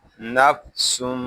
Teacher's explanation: سین یہ حروف صفیریہ میں سے ہے، اس میں سیٹی کی آواز آئے گی